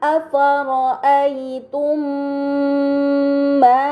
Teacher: Kemudian pada kata afara'aitum ma terdapat mim sukun bertemu dengan huruf mim. Ini dinamakan idgham mimi, maka mim sukun dibaca secara melebur dengan gunnah yang dipanjangkan